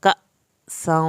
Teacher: الف پہ جزم ہے جھٹکا لگائیں گے